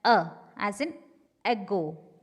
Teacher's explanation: That is unrounded, central, between half close and half open.